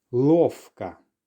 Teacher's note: Sometimes the letter V does merge with an F sound to get something like this in lovka. · Now you may have noticed with this word here that I'm actually pronouncing the V more like an F